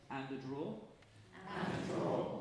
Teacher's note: So obviously draw is more important than and, but we want to hear the 2 Ds.